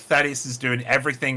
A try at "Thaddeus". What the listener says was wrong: with an S. It's Sadius with an S. That's literally how they pronounce it in the book. It starts with an S.